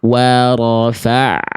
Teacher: Ada bunyi anak berikutnya setelah ain. Setelah bunyi ain sukunnya ada bunyi pantulannya.